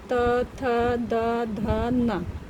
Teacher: तो आप इसको बोल करके भी देख सकते हैं, सीधे दंत से ही आवाज आती है, त थ द ध न। ठीक है, हमारी जो जीभ है वो दंत के पास ही जाके, दंत मतलब दांत के पास ही जाके टकराती है। · ता से ना तक का साउंड जो क्रिएट होता है वो होता है दंत से। तो आप इसको बोल करके भी देख सकते हैं, सीधे दंत से ही आवाज आती है, त थ द ध न।